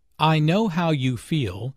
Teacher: Notice the emphasis on feel.